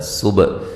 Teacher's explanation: با کو ہلا کے پڑھیں گے